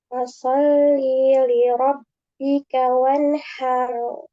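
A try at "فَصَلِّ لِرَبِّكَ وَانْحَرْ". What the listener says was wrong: li-nya ini pendek ya, jangan dipanjangkan. Fasolli li rabbika. Fasolli li rabbika. Jangan fasolli li rabbika. Nah, jadi kepanjangan li-nya. Jangan fasolli. Nah, tapi fasollili. Fasollili rabbika.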